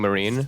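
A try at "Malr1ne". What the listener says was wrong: I mean, it does, but there's an L. You know what I mean? The L.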